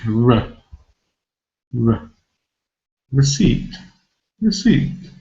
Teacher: you can see very clearly the first syllable is weak